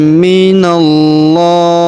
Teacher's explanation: Huruf na langsung sambung ke lafaz Allah atau lafzul jalalah. Kita tahan dan tekan di sini ya pada huruf lam dan kita panjangkan dua harakat karena terdapat alif kecil di atasnya.